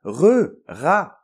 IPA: ʀa